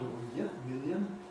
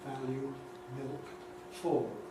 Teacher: in RPL is clear before a vowel sound, or million, but dark elsewhere, like, value, milk, fall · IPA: [ˡmɪljən]